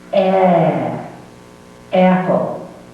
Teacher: U.S. pronunciation, open the jaw more, focus the tone toward the front of the mouth.